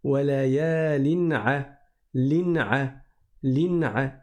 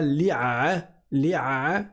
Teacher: On ne fait pas de fusion ou d'assimilation. On ne cache pas non plus. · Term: idhar